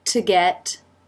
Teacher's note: Here's the zh mouth position. To get, T pronounced as a D here.